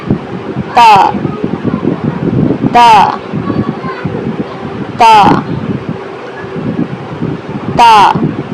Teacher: زبان کو اوپر والے دانتوں کے جو مسوڑے ہوتے ہیں، مسوڑوں کی جو ہڈی ہوتی ہے اس پر لگائیں تو آپ کا تا ادا ہوگا